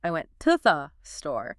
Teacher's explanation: So instead of proudly articulating, I went to the store, you hit went and store, and you crush the middle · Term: rule of three